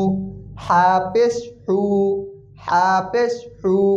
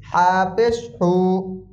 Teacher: গলার ভিতর থেকে চাপ দিয়ে আসবে।